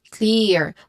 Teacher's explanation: In clearly, we have clear, the first syllable, and stressed syllable. We get clear. We get a long E vowel sound.